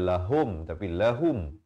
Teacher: ha baris dhammah bunyi hu, bukan ho